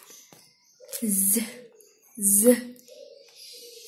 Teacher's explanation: place of articulation alveolar and manner of articulation fricative.